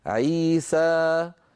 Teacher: عي حركتين، سا حركتين، مجموعها عيسى 4 حركات